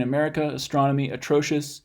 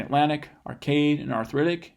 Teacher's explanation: that a is not gonna form a schwa as its phonetic representation it becomes more of what we call full vowel